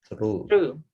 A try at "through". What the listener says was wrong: So there should be that th sound. Through. This one. You're saying this one. This one is through. Okay, through. This one is true. When you say this one, your tongue is between your tongue is behind your teeth. True.